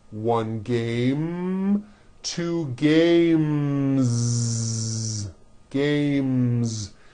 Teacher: when you add an S, the S should also be voiced